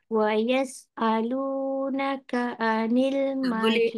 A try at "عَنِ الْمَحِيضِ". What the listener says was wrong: Tak boleh anil nanti dia jadi hamzah. Ni ain. Bukan hidung tau. Tekak.